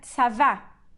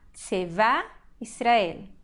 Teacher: Nós temos essa sílaba aqui do tzad, ela é uma sílaba átona, porque a sílaba forte é a última. E, então, o kamatz, essa vogal longa A, virou um shva